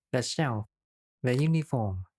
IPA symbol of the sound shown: ðə